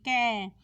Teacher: क को हम बोलेंगे तो क की ध्वनि हमारे कंठ से निकलेगी क कंठ से निकलेगा संपूर्ण कवर्ग कंठ से बोला जाता है